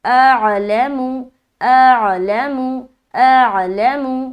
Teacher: حمزہ اور عین دونوں کا مخرج حلق ہے، لیکن حلق کے الگ الگ حصے ہیں. تو اس کو سیکھنا بہت ضروری ہے کہ حلق کے کس کس حصے سے کون کون سا حرف نکلتا ہے.